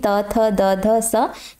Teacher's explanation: त थ द ध स, इनका उच्चारण स्थान दंत होता है।